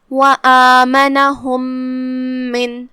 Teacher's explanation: ہم پہلے میم کو دوسرے میم میں داخل کر کے ایک ہی میم پڑھیں گے غنہ کے ساتھ اور تشدید کے ساتھ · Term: ادغام متماثلین صغیر